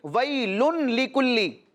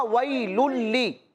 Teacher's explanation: लेकिन चूंकि ये लाम है और रा और लाम में सिर्फ इदगाम होता है, गुन्ना नहीं होता।